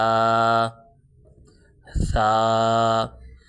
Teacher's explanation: الف، با، اب با حروف شفوی میں سے ہے، ہونٹوں سے ادا ہو رہا ہے۔ تا، ثا، جب ثا پڑھیں گے زبان کو تھوڑا سا دانتوں سے باہر نکال کے پڑھیں گے تاکہ سیٹی کی آواز پیدا نہ ہو۔